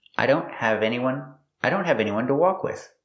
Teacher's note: The T in don't is a stop T. The tongue goes up, but you don't release it.